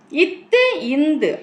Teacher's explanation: நாவின் நுனி பல்லின் அடிப்பகுதியை தொடும் நிலையில் பிறப்பதால் இதனை பல்லின ஒலிகள் என்பர்